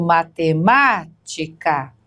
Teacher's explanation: não é a primeira sílaba, não é a segunda, é a terceira de trás para frente ou a chamada antepenúltima sílaba.